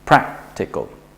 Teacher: since there are only three syllables then we just put the stress on the first one